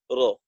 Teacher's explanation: জিহ্বার আগার পিঠ তার বরাবর উপরের তালুর সঙ্গে লাগাইয়া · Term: রর মাখরাজ